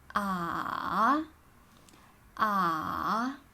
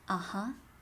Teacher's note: so the sound is also going down and then going up in english you actually have this sound which is in aha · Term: third tone